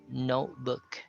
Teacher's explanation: i did not pronounce the t there even though it's in the middle of the word